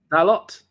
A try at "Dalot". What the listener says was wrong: you don't pronounce the T. You don't pronounce the T. It's Dalot.